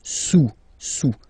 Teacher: Don't pronounce the final S, and then this OU combination of vowels is pronounced OU